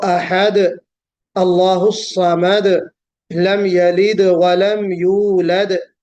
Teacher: ہر آیت کے آخر میں دال ہے جو حرف قلقلہ ہے